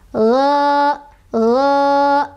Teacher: Jadi fathah itu pasangannya sama alif, atau alif itu pasangannya sama fathah kalau mad thobii. Maka cara bacanya adalah dipanjangkan dua ketukan.